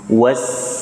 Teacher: Was ketemu lagi dengan sin sukun ya, desiskan, sofir istilahnya, suaranya sofir.